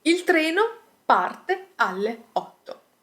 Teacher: The intonation here is quite flat, we are stating a matter of fact.